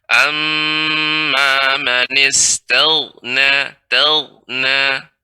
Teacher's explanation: gha termasuk huruf isti'la, sehingga ketika dia sukun, ya, isti'lanya naiknya suara ke langit-langit tetap terasa pengucapannya